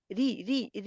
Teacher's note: जेर को मजहूल नहीं पढ़ते, बीमारी री री री की तरह पढ़ते हैं, कतरे रे की तरह नहीं पढ़ते